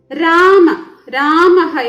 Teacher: വിസർഗത്തിന് ഹ എന്ന ശബ്ദത്തിന്റെ പകുതി ഉച്ചാരണമേ പാടുള്ളൂ